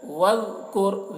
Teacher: ذال کو بہت باریکی کے ساتھ ادا کریں گے اور ذال کو ادا کرتے وقت خیال رکھنا ہے کہ اس میں قلقلہ نہ ہونے پائے، یعنی وذکر، وذکر ایسے نہیں کرنا ہے۔